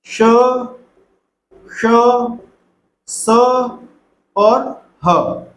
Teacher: इन व्यंजनों का जब हम उच्चारण करते हैं तो मुख से गर्म वायु बाहर निकलती है, क्योंकि ये स्पर्श के साथ, रगड़ के साथ निकलते हैं। स्पर्श तो होता है एक हल्का, रगड़ का मतलब गहरा स्पर्श। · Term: ऊष्म व्यंजन